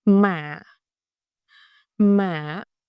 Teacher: it's a dipping tone. It starts low raising a bit then dip slightly.